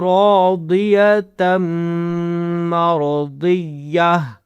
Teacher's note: آپ نے تا کی نہیں نکالنی ہے، ہا کی نکالنی ہے، جب اس تا پہ رکتے ہیں تو پھر ہم ہا کی آواز نکالتے ہیں